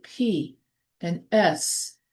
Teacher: Others like P and S are made without this vibration. So if you say P and S, you don't feel the vibration in your vocal cords. So that's known as voiceless sounds.